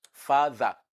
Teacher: the th in the middle of father is a voiced dental sound